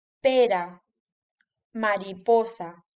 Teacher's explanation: la r suave es la r que va entre vocales